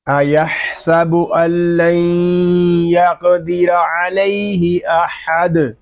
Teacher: اور وقف میں پڑھیں گے ایحسب ان لن یقدر علیہ احد. یہاں دال ساکن ہوگا تو پھر دال ساکن میں کلکلا کریں گے، وقف لازم اور وقف بالاسکان ہوگا.